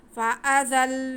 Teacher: زا میں سیٹی کی آواز آئے گی اور زا کو ہم تھوڑا رک کے لام کے ساتھ ملائیں گے تاکہ شد ادا ہو سکے